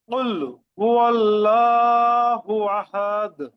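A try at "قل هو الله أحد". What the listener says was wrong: আহাদ, একটু চাপ হবে।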